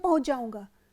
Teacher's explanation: जैसे हम बोलते हैं पहुंच जाऊंगा, और हमें इसे जब हम भाषा प्रवाह के साथ बोलते हैं तो बोलते हैं पहुंच जाऊंगा, तो यहाँ पर च का लोप हो गया, सीधे हम बोलते हैं पहुंच जाऊंगा, च नहीं सुनाई पड़ रहा है।